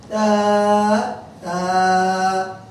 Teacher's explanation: জিহ্বার আগা উপরে দাঁতের আগা লাগিয়ে নরম করে, যেন শীষ না বের হয়। তা তা, বলুন।